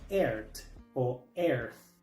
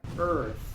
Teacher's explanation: la th se pronuncia con la lengua entre los dientes